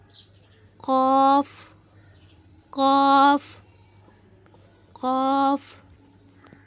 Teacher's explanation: جب زبان کی جڑ کا آخری حصہ اوپر والے تالو کے نرم حصے سے لگے تو قاف ادا ہوتا ہے۔ جب زبان کا جو آخری حصہ وہ اوپر والے تالو کے نرم حصے سے یعنی جو کوا ہوتا ہے کوا وہاں پر لگے تو وہاں کے نرم حصے سے تو قاف ادا ہوتا ہے۔